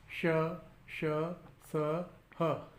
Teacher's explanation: जब इन व्यंजन वर्णों का उच्चारण किया जाता है तो ये घर्षण के साथ और गर्म हवा के साथ मुख से बाहर निकलते हैं, और इसका अनुभव हम अपने हाथों को मुख पर लगाकर कर सकते हैं। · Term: ऊष्म व्यंजन वर्ण